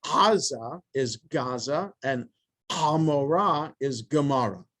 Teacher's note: because the sound comes from the back of the throat it sounds a little bit like a hard g which is why aza is gaza and amara is gemara okay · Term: ayan